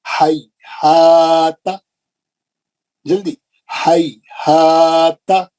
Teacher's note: ہاں پہ زبر ہے، اس کے بعد الف آ گیا، اس کو 2 حرکت کھینچنا ہے. تا 1 حرکت ہے، زبر ہے خالی. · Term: مد اصلی